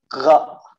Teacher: Dia sedikit ya makhrajnya ini berada ya mendekati daripada pangkal lidah, ya. Jadi di sini. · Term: huruf gha